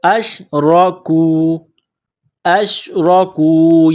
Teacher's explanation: را کے اوپر زبر ہے، را کو موٹا کرنا ہے